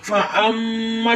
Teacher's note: फ़अम्मा और मीम मुशद्दद भी है। मीम मुशद्दद और नून मुशद्दद दोनों पर गुन्ना करते हैं, इसलिए इधर गुन्ना भी करेंगे। अम्मा जब गुन्ना करेंगे तो नाक में आवाज आएगी।